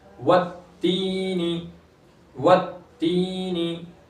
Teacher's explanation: या मद्दा है, या साकिन से पहले जेर, इसलिए एक अलिफ के बराबर खींचेंगे